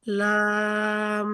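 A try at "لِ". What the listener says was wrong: লি টান হবে না। লাম জেরেলি, লাম জেরেলি,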